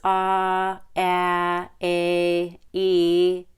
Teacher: e is even higher the tongue is higher the jaw is a little higher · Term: long e